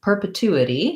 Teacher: perpetuity has uh third syllable stress so the two syllable is long and has the clear ooh vowel the first syllable per per is basically vowel er with a